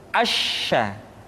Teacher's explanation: Sya dikeluarkan dengan cara mengangkat tengah lidah kita ke langit-langit. Asya. Dan sifat yang dimiliki oleh huruf sya yang paling nampak adalah apa yang disebut dengan sifat at-tafashi, yaitu menyebarnya angin di dalam mulut kita.